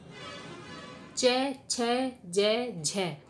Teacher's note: किंतु आदिकालीन हिंदी में ये स्पर्श संघर्षी हो गए। स्पर्श संघर्षी से मतलब है कि जो जीभ है वो तालु का स्पर्श तो करती है, किंतु जब स्पर्श करती है तो वो पूर्ण रूप से स्पर्श नहीं कर पाती है